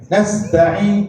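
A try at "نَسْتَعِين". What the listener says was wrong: Bunyi ain tu jangan bunyi di hidung jangan nastain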